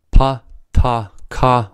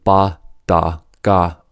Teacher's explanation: pa ta Ka are voiceless and B da ga are voiced sounds are called voiced when the vocal cord vibrates while the sounds are produced